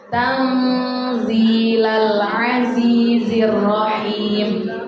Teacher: Di situ tanzila ada nun mati ketemu huruf za. Hukum bacaannya namanya ikhfa, yang kita baca dengan cara samar-samar, dengung dengan samar-samar.